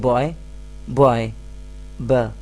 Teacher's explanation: So you're making this initial sound using your lips, b. So initial sound is b, which is not a vowel sound. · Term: consonant sound